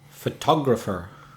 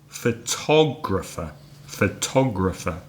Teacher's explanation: which one is stressed this time is the second syllable